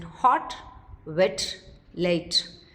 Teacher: Inaudibly released, that is without explosion, when it occurs finally